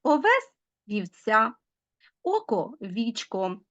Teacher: під час зміни початкового звука о на і У деяких словах може навіть з'являтися попередній приголосний в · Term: чергування